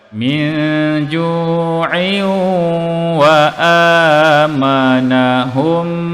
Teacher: Kita masukkan ke dalam huruf waw dan didengungkan pada kadar 2 harakat. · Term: idgham ma'al gunnah